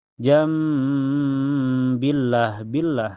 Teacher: Jam diganti dengan bunyi mim ya. Jadi nun sukunya diganti dengan bunyi mim dan ditahan sampai terasa ke hidung. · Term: hukum iklab